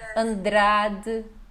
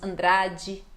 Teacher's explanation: o D não chiado